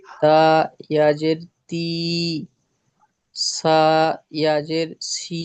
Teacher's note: ইয়া মাদ্দাকে এক আলিফ পরিমাণ টান দিয়ে পড়তে হয়